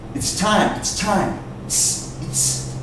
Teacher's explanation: You almost don't hear that T sound. Remember, the T sound is weak. Okay. The S makes it almost disappear.